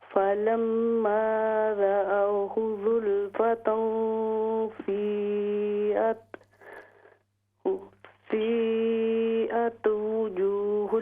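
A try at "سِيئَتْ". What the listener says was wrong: جی تا کو باؤنس نہیں کرنا، تا کو باؤنس نہیں کرنا. سیئت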